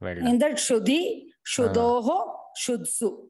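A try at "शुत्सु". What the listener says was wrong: Shudsu. Beautiful.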